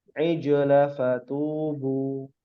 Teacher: Ijla itu dia tidak boleh dipanjangkan